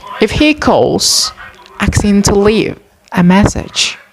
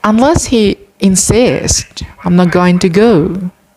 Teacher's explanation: as the native english speakers use this kind of sentence they commonly use raising intonation in the first clause